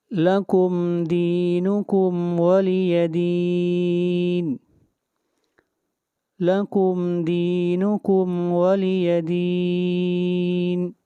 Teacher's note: دین کے اوپر مد عارض، اس کو 3 الف کے برابر کھینچ کر پڑھیں گے